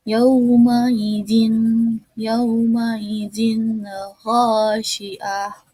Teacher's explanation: dibaca izhar halki karena bertemu dengan huruf halki, yaitu kho, jadi dibacanya itu jelas